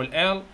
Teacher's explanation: مانينج لاترال يعني جانبي، يعني الهواء يخرج من خلال جوانب اللسان